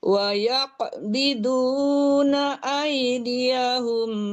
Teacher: Wayaq, dipantulkan qafnya